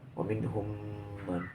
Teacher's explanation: Yang kedua, wa minhum man, alasannya hukum mim mati berjumpa dengan mim, itu dipanggil hukum mimnya idgham mimi, yaitu memasukkan mim yang pertama mati, memasukkan mim yang kedua mim yang hidup